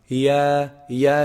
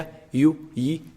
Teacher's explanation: Ya is pronounced from the middle part of the tongue and the roof of the mouth. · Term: voweled ya